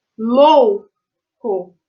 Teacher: o som lou é muito mais forte do co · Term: sílaba tônica